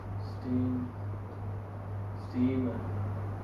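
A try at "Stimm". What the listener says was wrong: लंबा क्यों खींच रहे हो? शॉर्ट करना है, बल्कि दो कॉन्सोनेंट है। स्टिम है, स्टिम है। देखो ये तो आधा से बोला, मैं लिखता हूं। अब ये टे इसमें जोड़ के टी हो गया, स्टी स्टी, और इसको जल्दी से बोलना है तो ऐसे मान लो ये स्टिम है।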